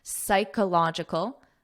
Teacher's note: this P is silent, psych, and this is a K sound, psychological.